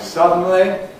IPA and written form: ˈsʌdn̩li (suddenly)